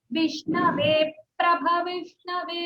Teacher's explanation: ये प्रा जो है संयुक्त अक्षर है इसलिए उसके पहले थोड़ा सा होल्ड करना